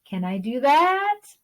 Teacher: the second tone goes up just like it looks